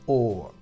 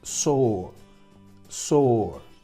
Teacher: Fijaos que esta conjunción es una O seguido por una R y solo pronunciamos el sonido vocálico. Sonido vocálico y además alargado.